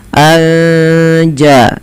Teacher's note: nun sukun bertemu Jim maka kita hukumi dengan bacaan Ikhfa Hakiki cara membacanya menyamarkan suara nunnya kepada huruf ja